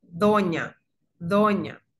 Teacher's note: la nasal palatal, es en la que reposa el ápice de la lengua en el paladar